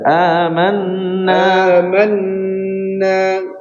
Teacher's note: Eh, nunnya diplong dibaca dua harakat.